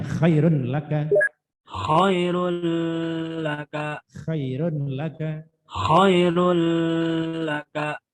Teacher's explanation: Melebur harokat tanwin kepada lam tanpa disertai dengungan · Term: idgham bila guna